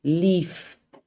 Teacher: If it doesn't have voice, leaf, it is still fricative, but there's no voice